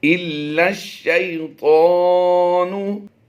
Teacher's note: لام کو اس شین کے ساتھ ملانا ہے. یہ الف اور یہ لام تینوں سائلنٹ ہو جائیں گے.